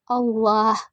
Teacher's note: Hukumnya tafkim karena lafaz Allah didahului oleh huruf hijaiyah berharakat dhammah. Cara membacanya tebal